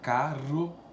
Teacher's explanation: percebe que a língua ela dá uma tremidinha no céu da boca